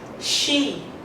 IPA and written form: ʃiː (she)